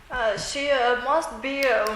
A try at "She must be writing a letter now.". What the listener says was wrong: Don't stress must be. She must be.